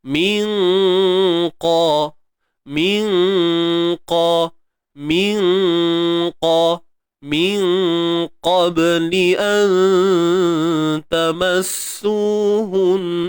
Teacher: Maka kita tahu bahawa huruf qaf adalah huruf yang tebal. Jadi dengung yang berlaku di sini tetap tebal, juga tebal. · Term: ikhfa hakiki